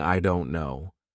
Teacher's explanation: this D is actually replaced with r i don't know you're not saying D you don't say I